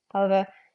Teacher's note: H is weakly pronounced at the beginnings of words. Not as aspirated as h, but a little bit of a something. It's not silent.